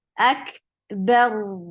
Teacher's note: Ak ba will be light, but ra will be heavy.